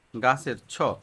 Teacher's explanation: প্রাণ এখানে বেশি কাঁপে কিন্তু বাতাস কম বের হয় গাছের ছ ছ টা হচ্ছে অঘোষ অর্থাৎ কম কাঁপে মহাপ্রাণ বাতাস বেশি বের হয় মুখ দিয়ে